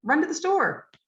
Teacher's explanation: you hear run clearly and you hear store clearly because those are the meaning words those are the lexical words they're carrying the meaning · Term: stressed